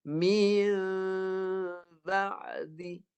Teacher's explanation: Nun tu tukar kepada lafaz mim. Bibir ni lebar, lafaz mim. Berserta dengung.